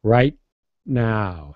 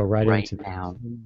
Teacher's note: I'm not releasing the T. It's not aspirated.